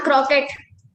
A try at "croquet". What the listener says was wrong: Not croquet, it's croquet. The T is silent there, croquet, okay?